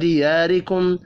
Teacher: الف مدہ کو ایک الف کے برابر کھینچ کر پڑھیں گے. را زیر کی وجہ سے باریک پڑھی جائے گی.